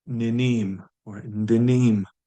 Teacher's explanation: We're deleting the short vowel at the end of the VAI to say I dance. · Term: short vowel deletion